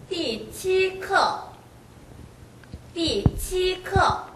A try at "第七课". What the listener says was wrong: 치 할 때 강하게 발을 시키세요. 치 할 때 지금 치 발음이 너무 혀가 입천장에 오래 붙어 있으니까 파열이 잘 안 돼요.